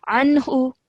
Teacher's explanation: this would be izhar noon sakin because the next letter is ha. Okay, so no nasal sound will be produced here. So we'd say anhu.